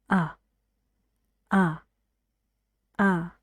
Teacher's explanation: و به ترتیب چیزهایی که من میگم، تغییراتی که من میگم رو ایجاد کنین. فک کمی بسته تر، لبها به حالت عادی برگرده، زبون رو یکم میکشین عقب و صدای آ. آ همزمان که دارین میگین سرتون هم میره عقب.